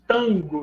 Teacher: Nesses casos, haveria, respectivamente, uma consoante nasal me diante da consoante labial da sílaba seguinte, né, campo, uma consoante nasal ne diante da consoante dental da sílaba seguinte, né, ponta, e uma consoante nasal nhe diante de uma consoante velar na sílaba seguinte